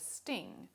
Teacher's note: if the vocal folds are not vibrating it will make a voiceless alveolar stop for example the t sound in the word sting for which